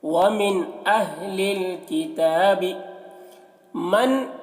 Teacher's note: نون ساکن کے بعد حمزہ ہے تو یہاں پر نون میں اظہار ہوگا، نون کو ظاہر کر کے جلد پڑھیں گے